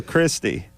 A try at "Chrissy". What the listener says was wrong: There's no T. It's just Chrissy.